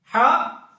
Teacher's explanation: علماء نے فرمائی کہ وسط حلق کے درمیان سے یہ ہا نکلتی ہے